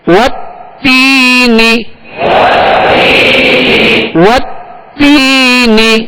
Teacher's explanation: تا یا زیر تی, یا مدہ ہے, ایک الف کی مقدار کھینچیں گے اور نون کو بغیر کھینچے بغیر جھٹکا دیے اس کی زیر کو معروف طریقے سے ادا کرنا ہے